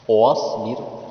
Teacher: صاد کو پر کر کے پڑھا ہے